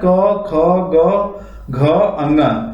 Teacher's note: क वर्ग में आते हैं क, ख, ग, घ, अंग, ये कंठ को स्पर्श करते हैं